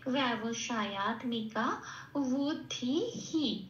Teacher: এই বিসর্গটা হ হিসেবে প্রতিস্থাপিত হয়ে যাবে। তার আরেকটা নিয়ম আছে যে আগের অক্ষরে যে আকার ইকার হস্যইকার থাকবে সেটাকে নিয়ে এটা প্রতিস্থাপিত হয়।